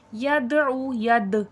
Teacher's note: دال حرف قلقلہ ہے، آواز پلٹ کر سنائی دے گی